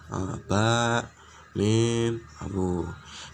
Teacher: bunyi yang timbul karena bertemunya bibir bawah dan atas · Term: suamit syafataniyah